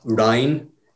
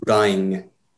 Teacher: the N at the end of the word sounds like it might be NG. So it's not Rhine, it's Rhying. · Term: velar nasal